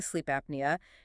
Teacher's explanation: The p latches onto the first vowel and the n latches onto the second.